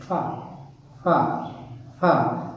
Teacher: So labiodental because we involve the upper teeth and the lower lips.